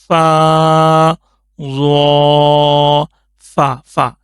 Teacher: ऊपर वाले दांत का जो किनारा है वह नीचे वाले होठों के तर हिस्से के साथ जब लगेगा फिर यह फा आदा होगा